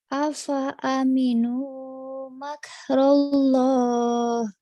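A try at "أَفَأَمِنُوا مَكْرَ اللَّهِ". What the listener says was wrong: Ra, jangan rullah, raullah. Afa aminu makrallah.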